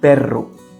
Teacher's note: it's a strong vibrating sound, just like the engine of a motorcycle